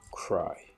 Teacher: R becomes voiceless because of the previous voiceless plosives so it's a case of progressive assimilation because hey is voiceless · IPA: /kraɪ̯/